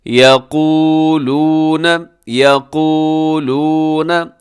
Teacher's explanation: الذین یقولون، اس کو آپ نے لمبا کرنا ہے کیونکہ یہ واو مدہ ہے، دو واو مدہ ہیں اس لفظ کے اندر۔